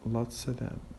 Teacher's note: Sometimes we drop the V of the preposition of before some consonants.